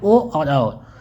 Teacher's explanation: कंठ और ओष्ठ से जिसका उच्चारण होता है होता है अर्थात ओ और औ ये जो है कंठस्थ हैं